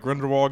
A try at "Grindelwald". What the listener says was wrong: Grindelwald. No, it's Grindelwald with a D.